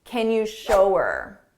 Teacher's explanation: We can drop that H and it will sound like ER